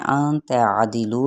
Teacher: دال کی زیر کو باریک پڑھتے ہوئے لو پہ واو مدہ کا قاعدہ ہو رہا ہے، ایک الف کے برابر کھینچیں گے